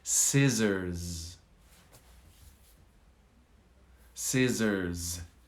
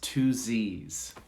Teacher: notice there's a z on the end not an s